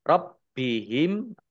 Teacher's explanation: bnya dibaca dobel ada tasdidnya